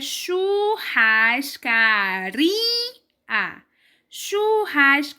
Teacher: mais uma vez a sílaba é pronunciada com mais força está antes da última sílaba ou seja é a penúltima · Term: paroxítona